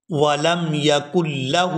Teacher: یہاں کاف کو لام مشدد کے ساتھ ملائیں گے، درمیان میں سے جو نون ساکن ہے اس کو ادا نہیں کیا جائے گا